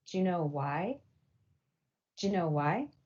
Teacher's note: But the reason why coalescence happens here is because the word do in connected speech often gets reduced to just a d sound. So in connected speech, do you ends up just sounding like Jew.